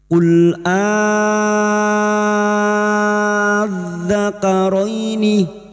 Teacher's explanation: Qul adzakaraini, di sini terdapat hukum bacaan mad farqi, yaitu bertemunya hamzah istifham dengan hamzah lam ta'rif panjang 3 alif atau 6 harokat